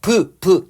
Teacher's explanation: 입술로 공기 막았다 터뜨리면서 내는 소리고요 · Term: 파열음